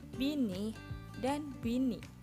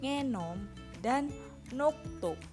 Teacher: Neh nasal apikodental diikuti oleh bunyi I yang merupakan vokoid depan, sedangkan neh nasal apikoalveolar diikuti oleh bunyi O dan O yang merupakan vokoid belakang. Jadi, bunyi neh dapat berubah karena lingkungannya sesuai dengan bunyi yang mengikutinya.